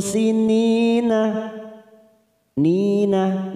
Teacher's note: kasr tanwin bertemu Sin ikhfa Hakiki kita samarkan tiga ketuk